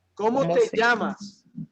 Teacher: That double L sounds like a Y, okay? It will always have that Y sound